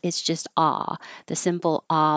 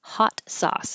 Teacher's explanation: sauce looks like it should be ow, souse, but it's not. It's just ah, the simple ah, like hot.